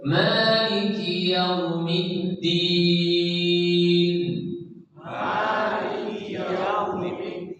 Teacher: hati-hati ma-nya dengan lebih dari 2 harokat. Panjangnya tak boleh lebih 2 harokat.